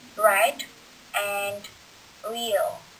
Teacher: the tongue curls up slightly on itself when produced. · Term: retroflex consonant